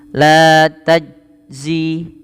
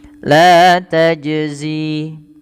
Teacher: Tajzi jim diwarnai di sini warna biru, menandakan huruf jim ini dibaca dengan memantul. Nah, istilah memantul di dalam bahasa Arab karena sifat makhrajnya ada mantulannya, yaitu kita namakan dengan qalqala. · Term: qalqalah